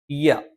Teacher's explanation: നാവിന്റെ മധ്യഭാഗം മേലെ അണ്ണാക്കിൽ സ്പർശിച്ചുകൊണ്ടാണ്